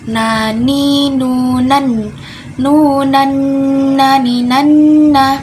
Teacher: Makhraj nun itu ada di ujung lidah langit-langit bawah. Dari langit-langit huruf lam disertai gunnah atau dengung di hidung. Dia juga sifatnya jahar atau tidak mengalir nafasnya. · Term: huruf nun